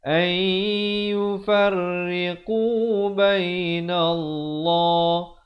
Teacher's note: Di sini idgham bi gunnah. Asalnya an yufarriqu jadi ay yufarriqu bainallah. Lafz jalalah di sini dibaca tebal 2 harakat.